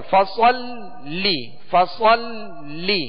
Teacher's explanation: تشدید ہے، لہذا لام کو دوہرا پڑھیں گے، 2 مرتبہ پڑھیں گے